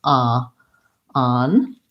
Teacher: in American English, the word on has the ah vowel